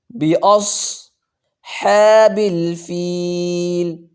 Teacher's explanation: صاد کو موٹا کریں گے، سی ٹی بھی نکالیں گے